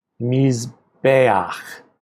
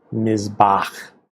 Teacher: The long vowel becomes a shorter vowel.